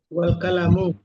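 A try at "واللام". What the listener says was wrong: Wal lam, lam jangan kalam. Wal lam, wal lamu, terus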